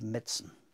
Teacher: The first syllable of medicine is so strong that the I is dropping out.